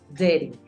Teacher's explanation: Lo que pasa con dirty es un matiz que hace la R también en las vocales.